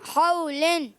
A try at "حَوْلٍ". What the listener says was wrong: Good. آگے.